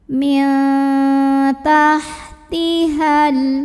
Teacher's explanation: Karena nun sukun bertemu dengan huruf ta, maka nun sukun ini bunyinya samar-samar, siap-siap ke ta disertai dengungan. Jadi bukan min tapi mil, samar-samar. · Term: ikhfa aqrab